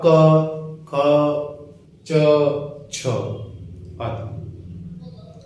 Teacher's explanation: अघोष वो होगा जब हम उन्हें बोलते हैं तो हमारी बॉडी में वाइब्रेशन या कंपन नहीं होती,